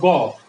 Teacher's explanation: গ বললে হচ্ছে কম বের হয় বাতাস, এই জন্য অল্প প্রাণ